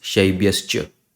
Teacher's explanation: In place of visarga, sha will come